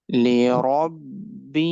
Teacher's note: Ra sound will be bold and ha sound will be longer because of the letter ya. لربه. This ha will be from the middle part, bottom part of the throat.